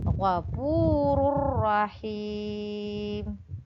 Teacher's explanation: Idgham bila gunnah dibaca dengan tanpa mendengung.